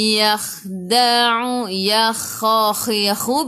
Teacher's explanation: Yakhakhu. Biar ada angin. Biar menggelegak.